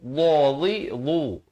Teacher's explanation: Bunyinya tebal ya, di hujung lidah.